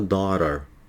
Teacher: Pode perceber que a ponta da língua bate atrás dos dentes de cima. Esse T é um som fraco que nós falamos. Então, automaticamente, em inglês, ele se transforma no som do R da aranha.